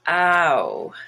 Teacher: as up and down it's more in the middle that front i want to make brown my tongue is going to be further back and also going to be changing uh or moving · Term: diphthongs